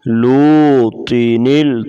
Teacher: طا کو موٹا کریں گے